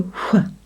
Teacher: It is worth remembering that in some accents the <h> is actually pronounced.